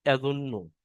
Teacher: নুনের উপরে তাসদিদ আছে, তাসদিদের অক্ষর দুইবার উচ্চারণ করতে হয়, একবার ডান দিকের অক্ষরের সাথে মিলিয়ে, একবার নিজে নিজে। নুনের উপরে তাসদিদ আছে, তাই নুন তাসদিদকে এক আলিফ পরিমাণ গুণনা করে পড়তে হবে। এবং নুনের উপরে পেশ আছে, পেশটি হলো হারাকাত, হারাকাতের পর তাড়াতাড়ি পড়তে হবে, টান দেওয়া নিষেধ।